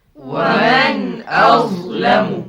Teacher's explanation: Udara tertahan kerana beramal dengan sifat jahar.